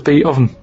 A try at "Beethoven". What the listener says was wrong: Beat Oven. No, you said beat. No. Beat Oven. It's not Beethoven.